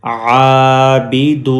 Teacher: ولا انتم عین کھڑی زبر آ با زیر بی عابی دال پیش واو دو عابدو یہ واو مدہ ہے واو لانگ واول ہے. اب دال کو سٹریچ کریں گے واو کی وجہ سے